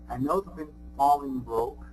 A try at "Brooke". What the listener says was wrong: And once again, the typical pronunciation, a little bit shorter, Brooke, Brooke.